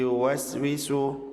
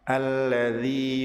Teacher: Makhraj huruf ya tengah lidah dan langit-langit, sedangkan makhraj mat ya berada di rongga tenggorokan dan mulut.